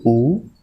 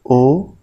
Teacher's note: जिन स्वरों के उच्चारण में जीभ का पश्च भाग काम करता है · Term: पश्च स्वर